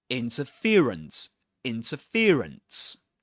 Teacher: So the main stress goes on fear. The syllable fear.